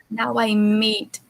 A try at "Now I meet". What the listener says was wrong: Perfect. Very good. Excellent.